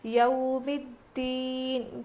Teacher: اب یہ یو نہیں ہے بلکہ یو ہے، حروف لین ہے نا، اس لیے ہم نرم آواز کے ساتھ جلدی ادا کر کے پڑھیں گے، یو ہوتا ہے، یا واو زبر یو نہیں بلکہ یا واو زبر یو ہوتا ہے، یوم الدین۔